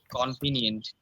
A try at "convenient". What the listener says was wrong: It's not convenient. It's con. Convenient. We write down O, but when we pronounce it will be k, not ko. Convenient.